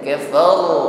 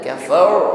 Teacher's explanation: Karena ra ini memiliki sifat takrir, irti'ad tarful lisan, ada getaran di ujung lidah. Kafar ya ada getarannya dan getarannya tebal.